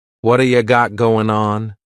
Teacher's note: a D sound this is really typical of American English where a t that's surrounded by vowel sounds is going to change to a d it's called a flapped t · that T at the end of the word what is going to change to a D sound